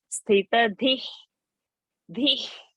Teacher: So if anything is coming, then we have to lift that visarga and drop it halfway. We should not chant this visarga.